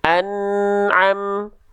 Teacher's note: Bunyi amnya terhenti sejenak baru masuk ke Ta